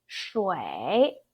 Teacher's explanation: When you see 乌 and 一 together, there's a hidden a, the English alphabet E, okay? So instead of 乌 一 we, it's actually 乌 a 一 way.